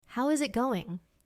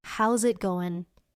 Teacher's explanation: in fast English, we often connect is it to zit. So how is it going becomes how's it going.